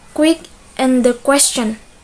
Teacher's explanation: For example, as in the word quick and the question. The letter U in the two words are read with the sound W instead of the sound U.